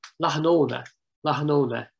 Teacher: with the emphasis on the second syllable